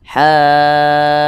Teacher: Panjangnya itu 6 harokat. Nah, jadi dipanjangkan dulu 6 harokat, kemudian di ujungnya itu dikasih nabr. Nah, nabr itu adalah dorongan. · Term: mad lazim mutsaqal kalimi